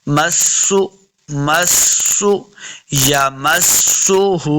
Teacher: सिन पे सीटी की आवाज़ देगी,